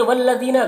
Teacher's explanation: ذال کو باریک پڑھیں گے، یا مدہ ہے، ایک الف کے برابر کھینچیں گے۔